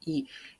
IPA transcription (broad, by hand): І